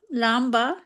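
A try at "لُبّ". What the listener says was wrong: बा बा भी नहीं बन सकता। लुब, हाँ लुब, लाम बाबा, लाम बाबा लुब, कई दफा बा के ऊपर शद के साथ आपको नजर आएगा लुब। तो बा के ऊपर जब शद होगी तो क्या होगा, दो बा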